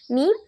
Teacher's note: மீம் இரு உதடுகளின் ஈரப்பகுதியின் சேர்வதால் உருவாகிறது